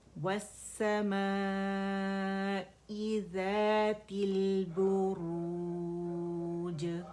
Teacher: جیم پہ ہم نے آ کے رک جانا ہے, اسے وقف کی صورت میں ہم قلقلہ کریں گے